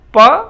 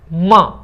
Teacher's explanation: क्योंकि ये पंचम अक्षर है, और पंचम वर्ण के एक वर्ग के पंचम सभी नासिक्य होते हैं। ये बाइलेबियल तो है, लेकिन ये नासिक्य ध्वनि है, नेजल साउंड है, नाक से बोली जाती है।